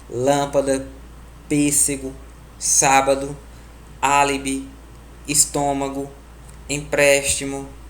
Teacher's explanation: A terceira sílaba de trás para frente é a que é a mais forte. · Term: proparoxítonas